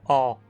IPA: ɒ